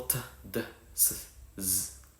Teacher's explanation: alveolars, pronounced in alveolar ridge